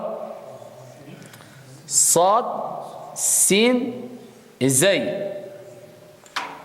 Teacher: Ça c'est le 9e point de sortie. La pointe de la langue avec ce qui sépare les incisives centrales inférieures forment le point d'articulation du sad, sin et z.